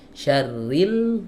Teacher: huruf lam tetap dilepas tapi melepasnya itu kapan berbarengan dengan kita mengucapkan huruf wau syarin nempel nih real Wah mengucapkan huruf wow lepas jadi nggak